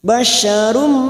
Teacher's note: duma tanwin bertemu mim idgham bi gunnah masuk pada huruf mim dan ditahan selama 3 harokat